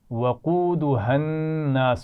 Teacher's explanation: وقودها الناس، ٹھیک ہے، ملا کر پڑھیں گے، قاف موٹا پڑھیں گے اور ہا کو واضح رکھیں گے، نون پر غنہ ہو رہا ہے الناس کے نون پر